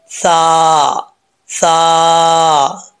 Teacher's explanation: normal پڑھا جائے گا، اس کو موٹا نہیں پڑھیں گے اور سیٹی کے ساتھ بھی نہیں پڑھیں گے